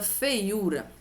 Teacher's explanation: o e é uma vogal e o i é a minha semivogal dessa forma eu tenho um ditongo que é decrescente ele vai diminuindo aqui eu tenho um hiato na posição paroxítona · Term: ditongo decrescente